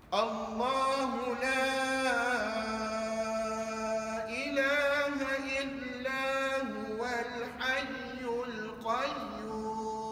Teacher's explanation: Kena baca dengan kadar 6 harakat pada la. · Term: mak ta'zim